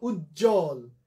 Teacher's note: যুক্ত ব্যঞ্জনের সাথে যদি বফলা যুক্ত হয় সেই বফলার উচ্চারণ হবে না।